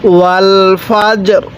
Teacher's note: ওয়াকফের সময় দুইটি সাকিন একসাথে হয়ে গেছে আমরা এই জায়গার মধ্যে ওয়াকফের সময় জিমটা শক্তভাবে উচ্চারণ করব রটা হালকাভাবে উচ্চারণ করব